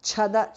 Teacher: Baddha, the second dha is mahapranah. Chhada, cha is mahapranah.